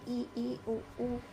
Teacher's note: संवृत का मतलब होता है जब हमारा मुंह ऑलमोस्ट बंद ही होता है